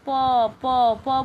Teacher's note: प बोलते वक्त ओट का यूज हो रहा है तो प वर्ग प प प बोलेंगे तो हम लिप्स जो